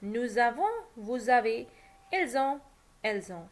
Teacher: s of the subject pronoun nous, vous, ils, elles is pronounced as an English z